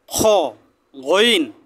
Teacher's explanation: জিহ্বার গোড়া থেকে একটু ভিতরে দিয়ে